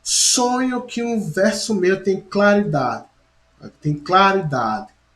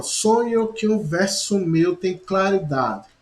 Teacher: a última sílaba da palavra claridade ela é tão fraca que meio que ela se apaga